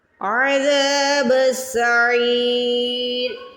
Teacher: زال پہ زبر کے بعد الف آ رہا ہے، زال کو کھینچ کے ادا کرنا ہے۔ عذاب السعیر، عین کی آواز نکالنی ہے، زال کے آگے الف آ رہا ہے، زبر کے بعد الف ہے، زال کو کھینچ کے ادا کریں گے۔